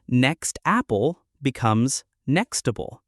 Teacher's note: The t moves smoothly into the vowel. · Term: Connected speech